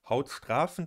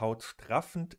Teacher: Hautstrafend und hautstraffend sind Minimalpaare, sie unterscheiden sich nur in der Länge des Vokals.